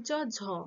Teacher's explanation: বর্গীয় জ, ঝ তালুতে ঠেকছে, তাই তালব্য ধ্বনি